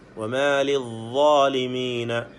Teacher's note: നാവിൻ്റെ അറ്റം മേലെ മുൻപല്ലുകളുടെ അറ്റവുമായി ചേർന്നുകൊണ്ട് അവിടെ നിന്നാണ് വാ വരുന്നത്.